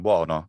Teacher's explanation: Say Italian buono, which comes from Latin bonus. Short o gets the vowel breaking of o into wo.